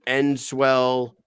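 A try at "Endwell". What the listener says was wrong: Enwell, New York. Enwell, New York. Yeah, Enwell. Just no S.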